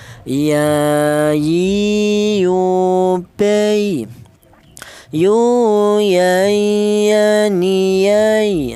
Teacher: huruf ya ini keluarnya huruf berasal dari tengah lidah